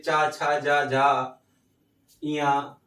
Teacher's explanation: चा वर्ग का उच्चारण स्थान तालु होता है